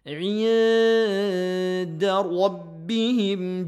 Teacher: Merenggangkan bacaan ikhfa nun mati bertemu dengan dal.